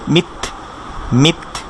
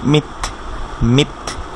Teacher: আর তার ক্ষেত্রে আমরা একটা জিনিস খেয়াল করি যে তার সাউন্ডটা যখন থামছে হালকা একটা বাতাস বের হচ্ছে, এটাকে আমরা বলে থাকি যে হামস, অর্থাৎ হালকা একটা বাতাস বের, মিথ, মিথ।